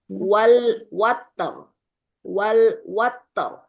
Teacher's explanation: Kalau ta ini kan memiliki sifat syiddah dan hames ya. Jadi dia tidak dialirkan seperti yas.